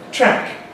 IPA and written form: træk (track)